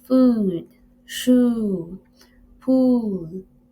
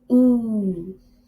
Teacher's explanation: with the tongue close to the roof of the mouth and the lips in a rounded position